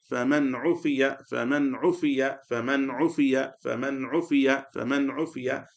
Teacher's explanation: So fa fatha fa mim fatha ma noon sakin man. After noon sakin comes idhar letter ayn. So the noon sakin will be read clearly.